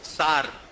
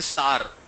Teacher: Instead of sir, they say sar.